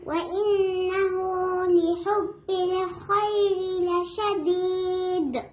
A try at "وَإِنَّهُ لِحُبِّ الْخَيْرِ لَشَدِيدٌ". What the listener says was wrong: Right.